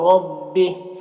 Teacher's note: را کو پر پڑھیں گے اور یہاں پر وقف کی صورت میں ہا کا کھڑا زیر سکون سے بدل جائے گا